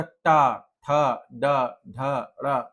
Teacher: ये हो गए मूर्धा से बोलने जाने वाले, मूर्धा पे जीभ जो है वो छू रही है।